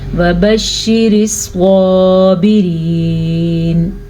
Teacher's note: سواد کو پور پڑھیں گے.